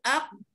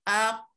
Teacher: Oh, bila kita perhatikan bila kita menghayati bunyi dia aq, kita terasalah duduknya di pangkal lidah · pangkal lidah dan anak tekak keluar daripadanya suara qaf